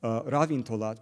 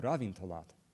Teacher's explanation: Ravintolat, the first one, avoids final stress. Ravintolat avoids a bad, light, heavy foot.